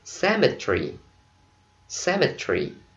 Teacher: Còn người Anh họ đọc có ba âm thôi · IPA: /ˈsɛmɪtri/